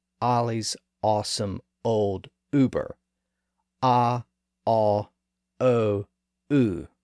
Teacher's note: if you pronounce those four sounds in that order you'll feel the movement from a in the lower part of the mouth up to ooh in the highest back part of the mouth